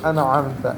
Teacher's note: حروف حلقی میں سے عین ہے، یہاں غنہ نہیں ہوگا، اخفا نہیں ہوگا